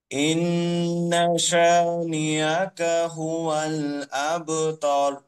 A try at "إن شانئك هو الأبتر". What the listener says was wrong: হ্যাঁ, এখানে শানি হামজা শক্ত, হামজা শক্ত করে আপনার হামজাটা নরম হয়েছে। ইন্না শানিআকা হুয়াল আবতার।